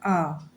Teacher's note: अ को ना तो जैसे अ जब हम अ बोलते हैं अ कहीं ना कहीं ये ना तो ओष्ठ से निकल रहा है ना तो दंत से यानी ये बीच से मुंह के बीच से निकलता है अ ठीक है हमारा मुंह पूरा ओपन नहीं होता है थोड़ा सा ओपन होता है तो मध्य स्वर के अंतर्गत ये अ आता है